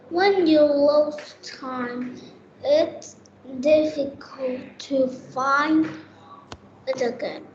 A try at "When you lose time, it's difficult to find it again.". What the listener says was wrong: Excellent. Very good.